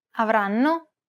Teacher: The first N is held for roughly the same amount of time as all the other syllables.